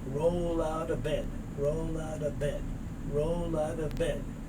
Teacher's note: this t moves over and becomes that soft d sound